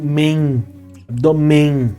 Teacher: Você pode perceber que o nariz acaba sendo utilizado quando eu pronuncio men, abdômen. Ele trabalha assim, o nariz, sai ar pelo nariz e esse som acaba ganhando esse caráter nasalado.